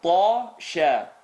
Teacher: Ta is heavy, sheen is light.